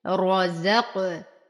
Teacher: نفخم الراء، نقلقل القاف فهي من حروف قطب جد مع تفخيمها